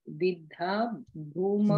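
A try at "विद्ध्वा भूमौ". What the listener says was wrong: Vidhva. Atra va api asti. There is.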